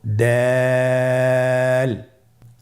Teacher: দাল হরফটি বারিক হরফ। এ হরফটি উচ্চারণ করার সময় আমরা অবশ্যই তিন আলিফ টেনে পড়বো।